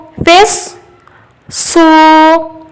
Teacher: سواد کی آواز سیٹی والی ہے تو سیٹی والی آواز بھی 2 بار آئے گی، ایک بار پا سے ملاتے ہوئے فس، سیٹی کی آواز آئی، اور ایک بار خود سے سو، فس سو۔